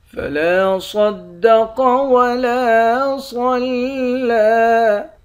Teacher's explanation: لام کے بعد الف ہے، الف حروف مدہ ہے، حروف مدہ کو ایک الف کے مقدار کھینچ کر پڑھتے ہیں۔ صاد، قاف، ان دونوں حرف کو موٹا پڑھیں گے۔